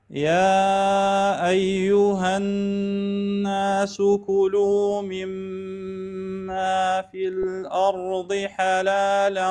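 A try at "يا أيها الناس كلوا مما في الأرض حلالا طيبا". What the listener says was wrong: اليوم شغلتك مع الأرض؟ اليوم عندك الهمزة مفخمة، شنو شغلتك مع الأرض؟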